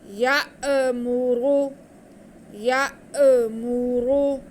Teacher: حمزہ ساکن کو ہم جھٹکا لگا کے پڑھیں گے